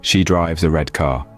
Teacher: the words drives and red are stressed because they are the main verb and adjective respectively they carry the most meaning in the sentence so the next